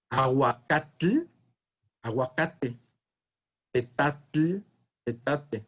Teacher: El grupo final TL invariablemente dio TE.